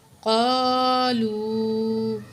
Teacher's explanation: وقالوا قلوبنا غلف، واو زبر وا، قاف کو موٹا پڑھیں گے کیونکہ حروف قاف جو ہے موٹے لفظوں میں سے ہے، اور ساتھ الف خالی ہے۔ تو الف جب خالی ہو، ما قبل زبر ہو، الف مد ہوتا ہے، 2 کاؤنٹ کھینچ کے پڑھیں گے